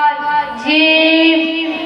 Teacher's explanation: সা জিহ্বার আগা সামনের উপরে দাঁতের আগা সাইডে লাগিয়ে সা উচ্চারিত হয়। জিম জিহ্বার মাঝখান সোজাসুজি উপরে দাঁতের সাথে লাগিয়ে জিম উচ্চারিত হয়